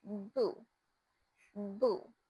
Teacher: The sounds for the boo started when touching my lips together, releasing a sound and air all together.